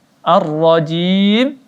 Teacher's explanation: Ar-rajim, jim dibaca 4 harakat.